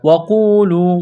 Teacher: واو کو جلدی پڑھنا ہے، قاف کو کھینچنا ہے، ایک الف کے برابر، واو مدہ ہے، لام کو بھی کھینچنا ہے، واو مدہ ہے۔